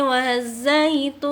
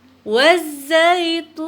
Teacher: Nah, itu juga tun dibaca panjang. Waz ditasdidkan ke dalam za dan termasuk huruf alif lam samsiah